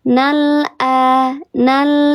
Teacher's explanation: Di lam ta'rif yang lamnya dibaca jelas ini namanya izhar qamari. Lamnya dibaca jelas.